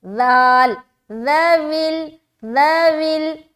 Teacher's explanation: ذال کو نرمی کے ساتھ بغیر سیٹی کے بہت ہی نرمی کے ساتھ باریک ادا کرنا ہے